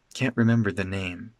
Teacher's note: This the is spoken in a very low tone and it's reduced.